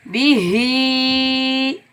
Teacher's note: हा के नीचे खड़ी ज़ेर, ऊपर मद्दे मुनफसिल जायज़ है, 3 अलिफ की मिकदार, ये छोटी मद है, इसको हम 3 अलिफ की मिकदार खींच कर अदा करेंगे। बिही, हमज़ा को या के साथ मिलाएंगे, क्योंकि या के ऊपर तशदीद है।